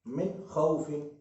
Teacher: नून तो साकिन है, गुन्ना नाक में आवाज आनी चाहिए मगर नहीं आएगी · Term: इजहार